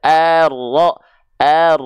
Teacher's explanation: kalau kita sambung ini namanya alif lam syamsiah atau Idam Syamsi maka dari a lamnya engak perlu dibaca langsung kita masuk ke huruf rnya